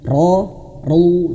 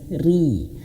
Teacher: Huruf ro itu akan tebal kalau dia fathah dan domah.